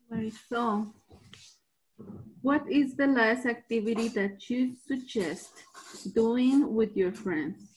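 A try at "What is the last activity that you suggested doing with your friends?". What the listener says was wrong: Suggested. This time we actually pronounce that ED. Okay, suggested.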